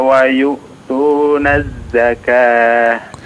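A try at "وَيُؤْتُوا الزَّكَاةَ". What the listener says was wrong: Ya, diperhatikan di sini ya. Wa yuqimus salata wa yu'tuz zakah ya. Yu'tuz zakah, tidak ada yu'tuna, tidak ada na-nya ya.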